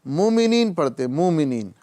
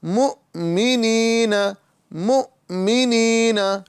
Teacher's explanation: حمزہ ساکن ہے، اسے جھٹکا دے کر پڑھیں گے